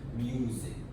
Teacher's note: in the British accents, the sound, the vowel sound is longer, while American will keep it short.